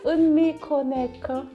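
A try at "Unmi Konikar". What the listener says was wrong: Okay, and there is an R on the end of that.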